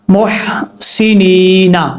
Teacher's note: اب یہاں پر جب وقف کریں گے تو نون ساکن ہو جائے گا، نون کے بعد جو یا ہے یہاں پر یا ساکن سے پہلے زیر ہے، اس لیے یہاں پر یہ یا مدہ ہے، ایک الف کی مقدار لمبا کر کے پڑھیں گے